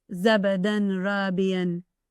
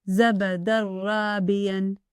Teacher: The letter Ra appears after a Tanwīn. It merges completely, and the Na sound of the Tanwīn is not pronounced. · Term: merge completely